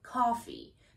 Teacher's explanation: what you need to know about an american accent is that there is no o sound there so you don't need to round your lips for this sound but you also don't have to think about the russian ah